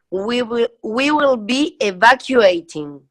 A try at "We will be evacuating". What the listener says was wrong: that is the ED ending sound that you said you had trouble with, but you pronounced it perfectly when you were repeating what I say.